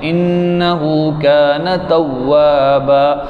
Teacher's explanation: نون مشدد ہے تو نون کو لمبا کرنا ہے